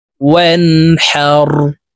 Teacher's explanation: হা হরফ হলকের মধ্যখান থেকে উচ্চারণ হবে, কারণ হার মখরাজ হলকের মধ্যখান থেকে হবে।